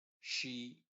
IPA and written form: ʃiː (She)